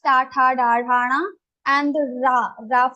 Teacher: These letters will be pronounced from your murdha.